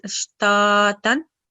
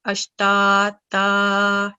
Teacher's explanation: So if you're pausing and the last letter carries a tanween, and it is Fathah then, tanween of Fathah, so it changes to a madda letter. So you're supposed to prolong the sound for 2 seconds. So instead of pausing as ashtatan, you're supposed to pause as ashtata.